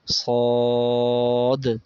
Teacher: تین الف کے برابر کھینچیں گے، آخر میں دال کی آواز آئے گی